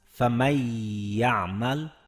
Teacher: Ya harfiga g'unna qo'shganimiz uchun uni uzunroq talaffuz qildik. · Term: g'unnali idg'om